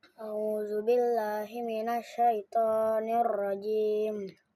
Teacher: Zal itu jadi pertemuan lidah dengan gigi atas.